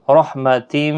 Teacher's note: تنوین کے بعد یرملون کا میم ادغام مع الغنہ ہوگا